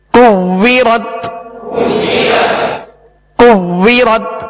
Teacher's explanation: واو میں ہونٹ گول کریں گے اور یہ واو مشدد ہے لہذا جمعوں کے ساتھ پڑھیں۔